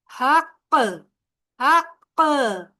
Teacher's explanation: आवाज भी रोक दी, सांस भी रोक दी और दबाव भी डाला। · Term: झटका